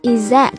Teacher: Ở đây chữ thờ đã bị nuốt bởi vì S đứng trước thờ. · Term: nuốt âm thờ